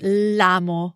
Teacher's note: So we could say sì, lo amo molto, but to avoid a vowel clash between lo and a in amo, the verb, we can drop the o and just say l'amo with the apostrophe and run the two words together, l'amo, which sounds like one bigger word phonetically.